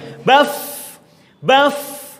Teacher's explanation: Ketika disukun betul-betul nampak desisnya dan ada suara panjang. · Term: fa